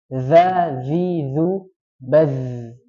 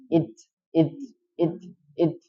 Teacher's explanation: baz ya itu rakhwah mengalir. Jadi bukan hamas, jadi tidak nafasnya tok.